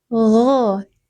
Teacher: gho tenggorokan bagian atas, bukan go tapi gho. Gho, tenggorokan bagian atas, dibaca 2 harokat karena ada alif sebelumnya fathah.